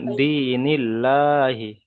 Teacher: আল্লাহ শব্দের পূর্বে যদি জের আসে তাহলে আল্লাহ শব্দটাকে বারিক করে পড়তে হবে।